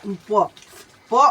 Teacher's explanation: प अगर आप बोलते हैं तो कहाँ से आता, ओष्ठ से